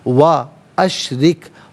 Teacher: را کے نیچے زیر ہے، را کو باریک کر کے پڑھا جائے گا